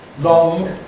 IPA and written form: lɒŋg (long)